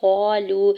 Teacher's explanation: वाव साकिन के ऊपर मद्द मुनफसिल भी है। 4 से 5 हरकत खींच के अदा करेंगे।